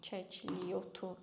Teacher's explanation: Kəkliyotu yenə özündən sonra sait gəldiyi üçün y kimi tələffüz olunur.